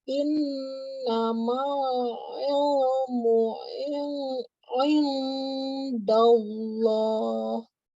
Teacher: Nun tasydid wajib dengung. Nun ketemu dalnya wajib dengung. Ayo, 2 kali dengung di sini.